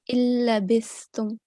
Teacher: we are going to apply complete assimilation here, which means you will not make any nasal sound. So we are going to merge the alif straight into Lam Mushaddad.